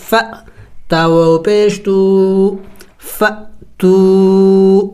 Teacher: واو مدہ ہے، ایک الف کے مقدار کھینچیں گے، اس الف کو نہیں پڑھیں گے، اس کے اوپر کوئی حرکت نہیں ہے۔